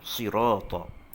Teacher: Sad ini hujung lidah kita sentuh antara gusi dan gigi bawah, kemudian lengkungan pada lidah, atas lidah kita itu kena pada lelangit. Di situlah makhraj huruf sad.